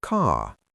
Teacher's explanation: An American speaker says car with a tense tongue. An RP speaker replaces that R by relaxing their jaw and lengthening the vowel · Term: British R